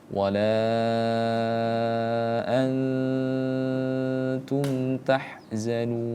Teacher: Mad arid lisukun ini harus kita panjangkan ya. Kalau gitu, wala antum tahzanun, kita panjangkan dulu madnya, kemudian kita baru munculkan huruf terakhirnya.